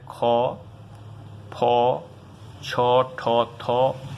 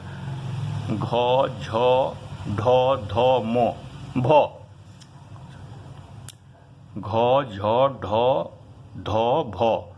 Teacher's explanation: वर्गों के द्वितीय और चतुर्थ अक्षर जो सल प्रत्याहार के अंतर्गत है आते हैं उनका महाप्राण प्रयत्न होता है।